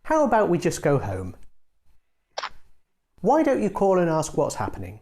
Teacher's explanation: to make a suggestion use a falling tone